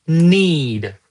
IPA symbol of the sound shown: iː